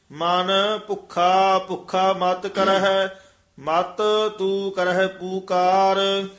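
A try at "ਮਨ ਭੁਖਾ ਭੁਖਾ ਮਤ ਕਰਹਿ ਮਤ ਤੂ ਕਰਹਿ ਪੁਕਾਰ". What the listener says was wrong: जी, पुकार इकट्ठा ही पाद उच्चारण करना है, पुकार वखरा नहीं कहना, दलैंकड़ नाल उच्चारण करना है पुकार।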